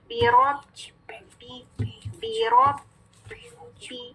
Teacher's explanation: ٹھیک ہے, کون سی حرکت کے ساتھ, کسرہ کی حرکت کے ساتھ. تو جو ہم با مشدد میں پہلی با ادا کریں گے تو آواز مخرج پہ بند ہو جائے گی · یہ با کسرہ بے نہیں ہے, بی